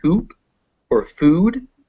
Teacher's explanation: the tense ooh as in hoop or food